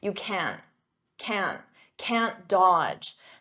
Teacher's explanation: in spoken English I'm not going to pronounce that hard can't with the T you can't can't can't Dodge notice here the D is silent